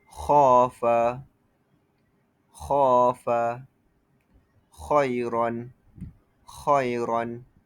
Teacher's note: mengangkat lidah ke langit ke langit bunyinya jadi tebal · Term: istislak, isti'la